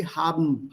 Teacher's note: see how this E merges with the N and the B towards the end